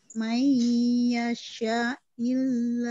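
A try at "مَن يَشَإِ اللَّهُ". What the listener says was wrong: Mayyasha'il pendek itu.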